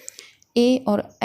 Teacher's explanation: ए और ऐ का उच्चारण स्थान कंठ तालु है। अब देखिए यहाँ पर कंठ तालु इसलिए है क्योंकि आ और ई के मिलने से ए और ऐ बनते हैं।